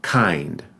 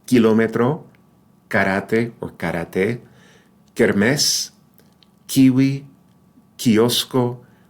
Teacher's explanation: in Spanish the K is pronounced like the K in the English word kind right but without that puff of air